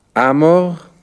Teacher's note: in der ersten Person Singular amor sind die Vokale von Wortstamm a und Endung o zu einem Vokal o verschmolzen